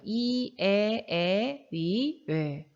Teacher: 고향 할 때 그 전설이 아니라 전설 혀가 앞에 위치하는 모음이다 혀의 최고점이 앞에 위치하는 모음이다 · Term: 전설 모음